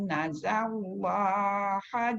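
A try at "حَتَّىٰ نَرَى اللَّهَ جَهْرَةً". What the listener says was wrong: Tu bukan zai. Dekat ra dua-dua tu dia tak boleh sama dengan huruf-huruf yang nipis. Hatta nara ada jadi nara dan jadi ra lah.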